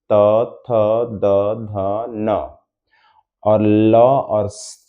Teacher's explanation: जैसे कि ली, त थ द का पांचों, त थ द ध न, और ल और स, इन सब का उच्चारण स्थान दंत यानी दांत, जो जीभ आकर के ऊपरी दांत के भीतर से दांत में सटेगा